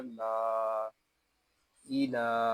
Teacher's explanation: یہاں لام کو ایک الف تک کھینچ کر پڑھیں گے کیونکہ لام کے اوپر کھڑا زبر ہے، یا زائد ہے، اس یا کو نہیں پڑھیں گے۔